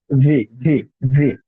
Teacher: এটা হচ্ছে নিচের ঠোঁটের পেটের সাথে উপরের দাঁত এনে লাগাবেন, লাগাইয়া একটু ঘাড়ো করে দিবেন, ভি, ভি, ভি, ঠিক আছে।